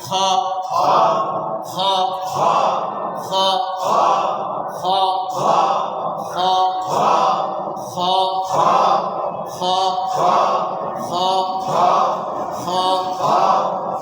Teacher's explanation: এই হরফটা উচ্চারণ হবে হলকের শেষ হইতে, হলকের শেষ, গলা যেন শেষ ওই জায়গা থেকে উচ্চারণ হবে।